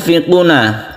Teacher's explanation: ketika kita membaca Nun itu rongga mulut kita bersiap membaca Fa jadi dia itu otomatis samarnya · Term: ikhfa